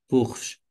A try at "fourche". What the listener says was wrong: Fourche, très bien.